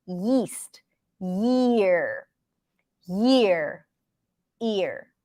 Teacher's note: the ya is exactly the same position as the E okay it's just like you're moving the tongue in the back a little bit